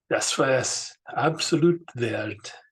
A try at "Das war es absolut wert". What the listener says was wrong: Be careful with the A sound. Make sure if you're an English speaker, especially, to open your mouth and say va and not wa. Yeah, va.